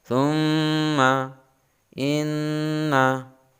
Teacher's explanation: suara keluar antara dari mulut dan hidung tapi lebih dominan ke hidung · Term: ghunnah